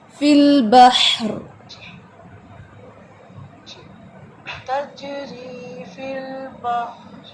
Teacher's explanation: إن في خلق السماوات والأرض واختلاف الليل والنهار والنهار والفلك التي تجري في البحر باہر نہیں پڑھیں گے، بحر تجری فی البحر، ہا کا جتنا بھی ہم واضح کریں گے وہ ٹھیک ہوگا، ادروائز ہا جو ہے وہ جھٹکے سے پڑھا جائے گا، باہر نہیں پڑھنا